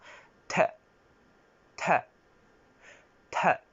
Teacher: La prochaine consonne est à prononcer entre le D et le T. Et pour moi, ce sera plus un D aspiré